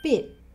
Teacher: he stops himself just before he makes the T sound.